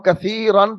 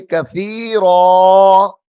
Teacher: جب ہم کثیرن پڑھیں گے تو لمبا نہیں ہوگا لفظ، جب ہم پڑھیں گے کثیرا تو پھر اس کے اندر مد ظاہر ہوگی۔